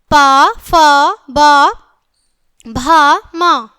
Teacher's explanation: प वर्ग प, फ, ब, भ, म। ओठ, ओंठ का ओंठ से स्पर्श ओष्ठ्य होता है